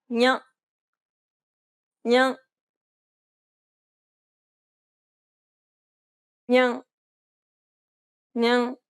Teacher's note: It sounds a bit like you're trying to say an N and a Y sound at the same time. Try to think of it as pronouncing an English N, but instead of using the tip of your tongue, try using the middle part of the tongue to contact the roof of your mouth.